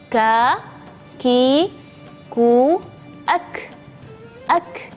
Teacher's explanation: Ketika huruf kaf ini sukun, maka ada suara hams. Hams itu seperti suara berdesir tapi yang sangat lembut sekali.